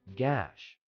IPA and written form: ɡæʃ (gash)